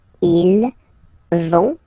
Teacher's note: final T not pronounced